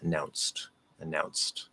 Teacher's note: what looks like a d is actually pronounced as a t because the consonant before it is voiceless